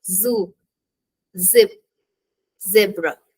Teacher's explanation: put your tongue behind your top teeth and force air out through the small Gap with a voiced sound